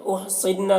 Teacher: नून मुशद्दद गुन्ना होगा